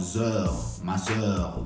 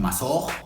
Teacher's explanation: Y son palabras como zeur, maseur, no es o, no estoy diciendo masor, si te digan no estoy diciendo o, estoy diciendo maseur. Es como entre la o y la e, es como si dijeras la e